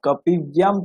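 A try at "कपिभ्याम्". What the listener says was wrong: একটু ভয়ের উচ্চারণটা আপনার ঠিক হচ্ছে না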